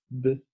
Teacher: el contacto entre el labio superior y el labio inferior es total y impide por completo el flujo del aire. Al cesar tal contacto, la presión del aire acumulado detrás del punto de articulación produce una cierta explosión. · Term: oclusivas